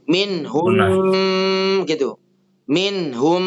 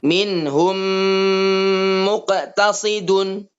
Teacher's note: Cara terakhir, apabila setelah ditasdid atau digabungkan, maka ketika membaca dhammah ke mim tasdid ini disertai dengung. Disertai gunnah.